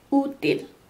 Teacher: when you pronounce U, this is the high vowel, so your tongue is the highest, and it's the most back vowel.